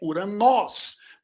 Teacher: O ômicron, ele é o primeiro O no grego. O O, propriamente dito. Um O aberto.